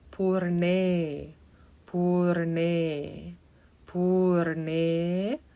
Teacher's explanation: So the bottom of the tongue touches the dome of the palate.